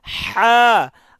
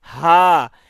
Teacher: একটা হা বলতেছি গলার মাঝখান থেকে শক্তি দিয়ে হা, আর একটা হা বলতেছি গলা ছেড়ে হা।